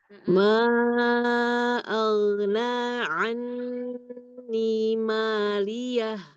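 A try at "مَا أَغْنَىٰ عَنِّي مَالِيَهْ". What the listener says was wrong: Poinnya, tebalkan lagi nih. Aghna.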